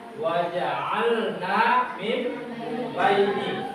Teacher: mengucapkan nun sukun atau tanwin yang berubah menjadi mim jika bertemu dengan huruf ba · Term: iklab